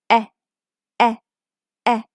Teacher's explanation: You need to again make your mouth smile. Lips stretched out and it's a quick voice sound. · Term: short sound e